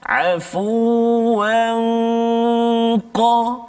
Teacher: dengung dia tu dibunyi seolah tebal sikit bunyi dia, sebab huruf qaf isti'la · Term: ikhfa hakiki